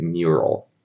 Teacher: If you do a M plus a hidden Y sound, you get mural.